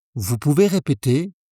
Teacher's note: And lift your voice at the end. It's a question.